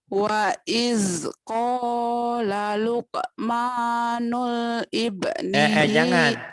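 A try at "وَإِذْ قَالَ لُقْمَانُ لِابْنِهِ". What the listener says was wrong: jangan nul. iz qala Luqmanu lib bukan nul. Lib. Ini lamnya nggak ada tasdid, nggak ada sukunnya. Luqmanu lib. Diwasol alifnya lib nih ibni.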